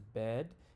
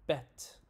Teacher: E tends to be longer before voiced sounds, such as bed, and shorter before voiceless sounds, such as bet. Pronunciation, it's a front middle low vowel. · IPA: ɛ